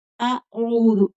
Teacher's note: عین کو کھینچ کر پڑھیں گے، آگے واو مدہ ہے